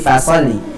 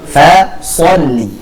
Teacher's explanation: jadi jangan kita tipiskan shnya menjadi foli tapi Fa sholli